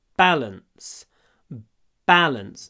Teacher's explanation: Ударение на первом звуке, на первом слоге.